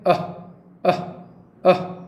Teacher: कु का वर्ग, देखिए 5 वर्ण, 5 वर्ण क से लेकर ग तक सारे कंठ से निकलेंगे।